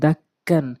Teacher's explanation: তো এই নিয়মটি ছিল যে তাসদীদওয়ালা হরফ ২ বার পড়া যায়। প্রথমবার তার ডান দিকের হরকতের সঙ্গে, দ্বিতীয়বার সে নিজে নিজে উচ্চারণ হয়।